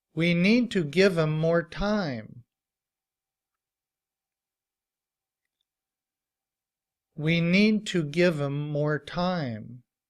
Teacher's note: when we reduce the word him, we drop the H sound and we just say im. And when that's combined with the word give, it sounds like give 'em.